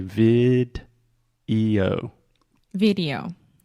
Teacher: So first we have a hard D sound, vid, and then we really exaggerate the O at the end.